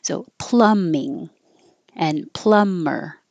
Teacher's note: you see the B but you don't hear the B at all it just disappears